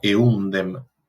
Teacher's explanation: esta M en contacto con la dental produce una disimilación, ¿sí? Regresiva, y hace que la M pase a articularse como una N. Entonces queda eundem.